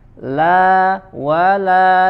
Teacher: Ya, wa huruf waw ya, manyunkan terlebih dahulu bibirnya, wala, kemudian huruf la lagi ya, sama dengan sebelum-sebelumnya. La kita baca dari adna hafatul lisan ya sampai muntaha hafatul lisan ya, dari sisi lidah bagian depan ya